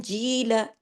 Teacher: जी को मैंने 2 हरकत खींचा, क्यों? या मद्दा की वजह से।